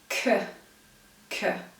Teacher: But when you say k, k, the sound k is pronounced in the back of your mouth